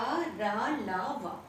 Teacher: अंतस्थ व्यंजन मीन्स जब हम इनको बोलते हैं, ये कितने होते हैं, 4, या, रा, ला, वा, ये अंतस्थ व्यंजन है और इनको बोलने से हमारी जो कंठ से स्वर आता है, कंठ से डायरेक्ट आता है, मतलब हमारी जीभ मुंह के किसी भी भाग को टच नहीं करती, ये अंतस्थ व्यंजन कहलाते हैं।